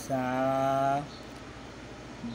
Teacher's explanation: সাটা আপনার একদম ফাতলা করে বলতে হবে, আপনি জিব্বাটা হালকা বাহির করবেন আর হালকা বাতাস বাইর হবে